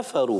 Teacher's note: کافرو کو کاف کو موٹا نہیں کرنا